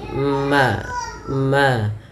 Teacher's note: Izhar syafawi berkaitan dengan bibir kita yaitu adanya huruf mim. Yang mana mim termasuk daripada makhrajnya keluar daripada bibir kita yaitu dirapatkan